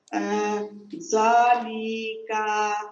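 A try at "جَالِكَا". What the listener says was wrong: যাতে টান দেন না, লিতে টান নাই, কাতে ওটা নাই, সেক্ষেত্রে যেটা টান নাই যেখানে টান দেওয়া যাবে না সেটা দ্রুত বলতে হবে, তাড়াতাড়ি বলতে হবে, লিকা। দেখেন যাতে টান আছে এখানে টান আছে এই জন্য বেশি টানতে হবে, আর এখানে টান নাই আর এখানে টান নাই এই জন্য দ্রুত বলতে হবে, লিকাটা লিকাটা যত তাড়াতাড়ি বলতে পারেন।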